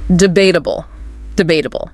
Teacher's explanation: Stress on that second syllable.